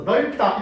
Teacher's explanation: 리을이 대표음이고 비읍이 떨어지니까 널 하고 여기에 된소리 돼서 넓다 이렇게 되거든요.